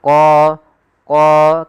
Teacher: Kemudian pada lafal qa di sini ada mad tabi'i yaitu qa. Tebalkan huruf qa-nya qa karena dia huruf isti'la yaitu pangkal lidah kita terangkat.